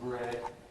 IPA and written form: bred (bread)